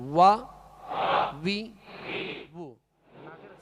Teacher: واؤ کا مخرج ہی ہونٹوں کی گولائی ہے. واؤ کا مخرج ہی ہونٹوں کی گولائی ہے، نکلتے ہی یہیں سے ہونٹ گول کریں گے تو واؤ ادا ہوگا.